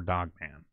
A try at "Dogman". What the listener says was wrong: Dogman, not Dogpan. Yeah, you said Dogpan.